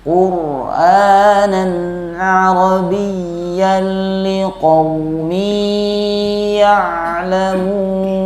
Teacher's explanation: ra ini termasuk huruf tawasul. Jadi bacanya agak diulur sedikit.